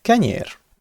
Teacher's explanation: Later, the rule from earlier where the word final short vowel disappears and lengthens the previous vowel happens and we get kenyir.